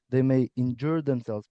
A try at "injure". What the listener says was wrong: They may injure themselves, they may injure themselves. So again, the stress on injure is on the first syllable, but again, you'll hear that the pronunciation is choppy like this. It lacks some stress timing.